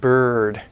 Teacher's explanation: Then there's a central vowel, looks like a little 3, and that's more of an sound, like in bird, So it's kind of it's like a schwa, but it's a little lower and it's more colored. And this one can occur in stressed syllables like bird, but the schwa is unstressed, like the bird, the bird.